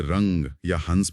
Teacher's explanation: जब हम अनुस्वार यानी अंग बोलते हैं, जैसे रंग या हंस में, तो हवा सिर्फ नाक से बाहर निकलती है।